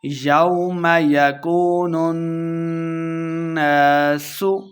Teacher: نون مشدد ہے، غنہ کر کے پڑھیں گے، سین پہ سیٹی کی آواز آئے گی۔